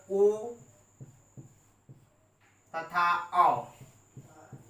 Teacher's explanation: अ है हमारा कंठ, उ है हमारा ओष्ठ, दोनों का संयोग हो गया तो ये हो गए कंठ्योष्ठ। अर्थात ओ तथा औ ये दोनों वर्ण कंठ्योष्ठ होते हैं